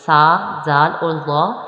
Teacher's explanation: سا، زال اور ظا ان میں سیٹی کی آواز نہیں آنی چاہیے